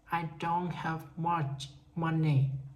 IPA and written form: aɪ doʊnt hæv mʌʧ ˈmʌni. (I don't have much money)